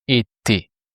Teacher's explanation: We removed the RE, the R sound, and we replaced it by E, just the sound E, which makes été.